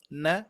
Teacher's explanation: pertemuan ujung lidah menempel ke langit-langit huruf nun